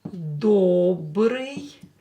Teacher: O is stressed here, so pronounce it as O. Don't change it.